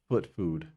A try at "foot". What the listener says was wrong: No, not food. Not D. T at the end.